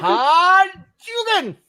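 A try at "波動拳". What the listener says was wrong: It's Hadouken. It's emphasis on the do, not the can.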